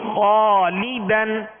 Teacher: اس الف کو پر یعنی موٹا پڑھیں گے، اس لیے کہ الف سے پہلے والا حرف پر ہے